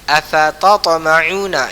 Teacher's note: Huruf pertama dimasukkan ke dalam huruf kedua, dibaca tanpa gunnah. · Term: idgham mutajanisain